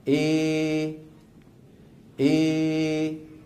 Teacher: فيخرج صوت ممزوج بين الالف والياء فيه الف وفيه ياء بنسبه واحده يعني 50% الف 50% ياء اي اي اي اي هذا الصوت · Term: الاماله الكبرى